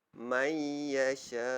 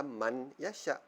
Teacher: Kita masukkan bunyi huruf man, nun mati man tadi tu ke dalam bunyi ya. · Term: idgham ma'al gunnah